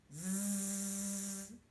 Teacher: si je fais le son Z, ça va vibrer, ça va bouger, ce qui est normal puisque j'utilise ma voix